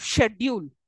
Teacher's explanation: most of the British English often pronounce words like schedule with a sure sound